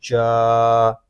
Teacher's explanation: جیم کھڑا زبر جا، جیم جو ہے یہ زبان اور تالوں کے درمیان والے حصے سے ادا ہوگا۔ جب ہم جیم کو ادا کریں گے تو آواز منہ میں پھیل جائے گی۔